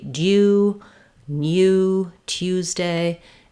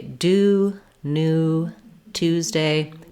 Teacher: In American English, we don't have any glide in these words. We just say do, new, Tuesday, just that oo sound directly, only the vowel.